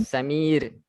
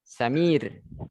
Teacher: Bukan mati macam dibaca sukun macam kita bilang R dalam bahasa Inggris, tapi tipis.